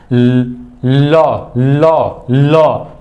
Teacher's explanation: जब बोलने ही जा रहे हैं तो बगल से हवा निकल रही है। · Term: पार्श्विक व्यंजन